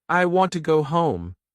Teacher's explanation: Now try again. Stress want and home.